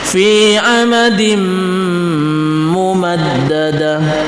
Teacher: sifat daripada mim tasdid di sini adalah ghunah musaddah maka gunahnya kita panjangkan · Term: gunnah musaddah